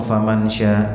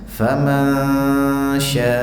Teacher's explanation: Nun sukun ketemu shin itu ikhfa tapi disertai gunnah, ya, ditahan sebentar. Jangan langsung faman sya, enggak.